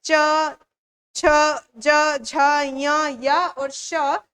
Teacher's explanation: च, छ, ज, झ, य, य और श यह तालव्य से उच्चारित होते हैं।